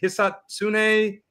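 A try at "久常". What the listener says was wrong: So I think it's a Hisatsune with the emphasis on like that first syllable as opposed to Hisatsune. But that's my best guess. I think that's how you pronounce it.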